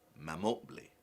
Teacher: Pe, man becomes mam, and the pe disappears.